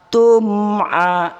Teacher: Mim jelas dan terang, tidak boleh dipanjangkan, tidak boleh digantung. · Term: izhar syafawi